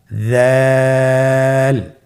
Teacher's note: উচ্চারণ করার সময় অবশ্যই 3 আলিফ টেনে পড়তে হবে। দালের মাখরাজ হলো জিহ্বার আগা সামনের উপরের 2 দাঁতের আগার সঙ্গে লাগিয়ে